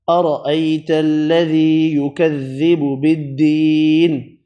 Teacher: ذی یا مدہ، دی یہ بھی یا مدہ، یا مدہ دونوں ایک ایک الف کی مقدار میں کھینچ کر پڑھیں۔